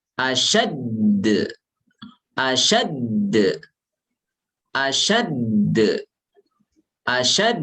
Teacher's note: qalqalah musyaddad, huruf qalqalah yang tasydidkan, itu dia ada tekanan